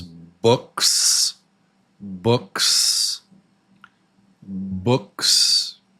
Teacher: hand on the throat, quiet snake sound.